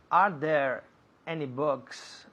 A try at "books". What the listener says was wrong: Good. Books. Un poco más largo. Books.